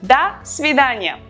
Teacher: Da, we write do, but we pronounce da because o in an unstressed position is pronounced as a